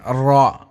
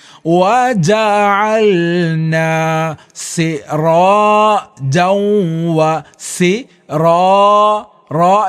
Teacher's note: തലയുടെ മുതുക് ചേർന്ന് കൊണ്ടാണ് മേലെ ഭാഗത്തേക്ക് മുട്ടിക്കൊണ്ടാണ് റുടെ ഉച്ചാരണം വരുന്നത് അഥവാ മോണയുടെ ഭാഗത്തേക്ക് നാവിൻറെ തലയുടെ മുതുക് പോയി മുട്ടി കൊണ്ട് വേണം ഉച്ചരിക്കാൻ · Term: റയുടെ ഉച്ചാരണം